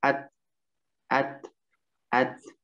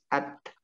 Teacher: Ta itu letaknya adalah ujung lidah, ya, ujung lidah. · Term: huruf ta